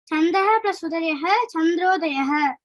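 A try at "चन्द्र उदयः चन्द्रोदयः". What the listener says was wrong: Chandra eva. Tatra visargaha nasti. Chandra udayaha, chandrodayaha.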